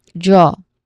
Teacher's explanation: So here you open your mouth wide and make a long O sound